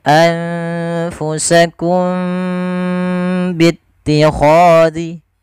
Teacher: Ini kita namakan dengan ikhfa syafawi. Cara membacanya, suara mimnya harus ditahan, tidak sebagaimana izhar yang tidak boleh ditahan suara mimnya.